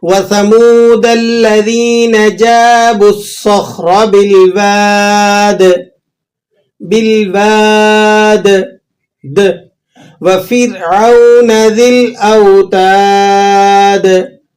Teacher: ان تمام آیات کے آخر میں جو قلقلہ ہو رہا ہے اسے قلقلہ کبیرہ کہا جاتا ہے، یعنی اسٹرانگ قلقلہ. تھوڑا سا بڑا قلقلہ ہوگا یہ، اور آپ نے محسوس کیا.